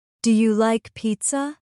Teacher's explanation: Notice my voice rising at the end.